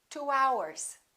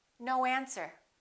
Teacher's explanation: Let's put a little W in there and we say 2 hours.